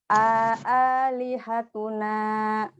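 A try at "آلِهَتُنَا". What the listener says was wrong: Oke, ini ada namanya mad badal. Makanya setelah A tuh ada alif kecil, jadi bacanya 2 harokat. Kurang panjang.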